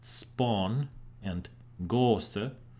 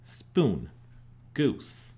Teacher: Words that were pronounced with a long o (aw) like spawn and gose now are pronounced with a /u/ (oo) spoon, goose. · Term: great vowel shift